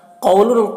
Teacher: قاف کو پر پڑھیں گے کیونکہ قاف حروف مستعلیہ میں سے ہے